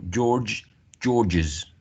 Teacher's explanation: George, ends in sibilant, and then we need to add an extra syllable.